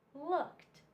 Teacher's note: So this one sounds like a T. Just a T sound, not an E, not a D, just t, t, t in looked.